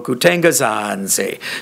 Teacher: The last example, kutengazanze, shows you that it's actually phrasal. So it's the word fruit, zanze, that gets the length, not the verb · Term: penultimate lengthening